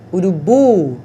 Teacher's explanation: quando a última sílaba é forte, a palavra, então, é classificada como oxítona · Urubu, a última sílaba é que é a forte